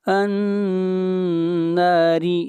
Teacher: را کو باریک پڑھیں گے، را کے نیچے زیر ہے